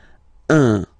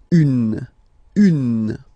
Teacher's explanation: if you listen to me you don't hear any n okay so it's just a combination of the two h all